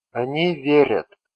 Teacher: The conjugated stem is верь, and it's same in all forms. In they form, sound a follows soft consonant sound r, and therefore is denoted with soft vowel letter ya.